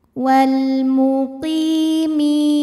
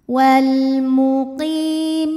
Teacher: Maka cara bacanya huruf qaf ini kita panjangkan 2 harokat. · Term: mad tabi'i zahiri